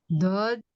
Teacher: sisi lidah kiri kanan bertemu dengan gusi atas. Dua sisi lidah ya dia ee dijelaskan dua sisi lidah atau salah satunya bertemu dengan gigi geraham a atas.